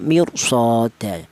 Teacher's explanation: rnya mati di sini ada kasrahnya tapi setelah ro ini berubah huruf istila itu cara bacanya ra tersebut dibaca tafkhim atau dibaca tebal